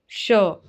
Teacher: मुर्धन्य वाला श इसका उच्चारण कैसे करेंगे मुर्धा की सहायता से